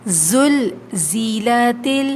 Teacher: زلزلت یہ زا جو ہے یہ سیٹی کی آواز آتی ہے، اس میں سیٹی کی صفت پائی جاتی ہے، سختی کے ساتھ پڑھیں گے دانتوں کو بند کر کے۔